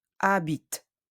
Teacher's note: The E is silent, but we hear the T, the T sound.